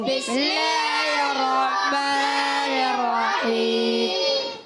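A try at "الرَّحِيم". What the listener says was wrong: رحیم، رحیم نہیں، رحیم۔ جی آپ نے کچھ کیا ہے، رحیم ہا کو تھوڑا سا کمزور کیا تھا، جی درست پڑھنا ہے، ٹھیک ہے۔ وما نقموا منهم إلا أن يؤمنوا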